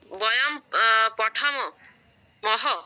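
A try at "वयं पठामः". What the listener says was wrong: পঠামহ। আপনি বিসর্গর উচ্চারণটাকে অবজ্ঞা করছেন কেন? বিসর্গর অনেক মূল্য আছে। সংস্কৃত ভাষায় বিসর্গ দিলে একরকম অর্থ হয়, না দিলে অন্যরকম অর্থ হয়। বাংলায় কোনো গুরুত্ব না থাকলেও সংস্কৃতে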